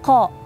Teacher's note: tidak ada hembusan nafas ketika kita menyebutkan huruf qaf